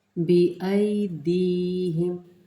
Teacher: बिअयदीहिम, ये देखें ये या मद्दा है, ये है खींच के पढ़ना, 1 से 1.5 अलिफ की मद्दा।